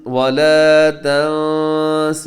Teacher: نون ساکن کے بعد سین ہے تو یہاں بھی کیجیے گا اخفا